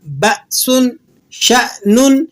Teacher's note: تو حمزہ کی ادائیگی جھٹکے سے ہوتی ہے